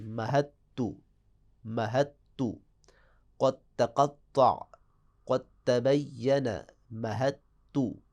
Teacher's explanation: دال نہیں پڑھی جائے گی، گویا کہ دال تا میں تبدیل ہو جائے گی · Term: دال کا تا میں ادغام